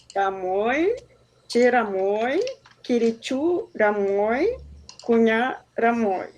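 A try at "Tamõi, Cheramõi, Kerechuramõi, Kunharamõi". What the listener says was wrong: Isso.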